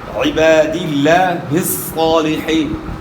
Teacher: لفظ اللہ کے نام سے پہلے والے حرف کے نیچے زیر ہے، تو لفظ اللہ کا لام باریک ادا ہوگا